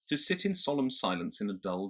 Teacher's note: the general shape of a phrase in general American, is sort of over the top and it lands hard